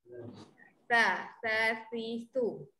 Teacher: Makhraj huruf sa lidah keluar.